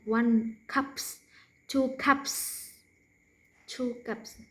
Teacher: no voicing at the end